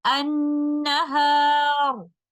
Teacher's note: In the next example, annaharu, when I choose to stop with Ishmaam, we'll put a temporary sukoon on letter ra, and letter ra here is in a tafkhim condition, and I will recite it like this, annahar.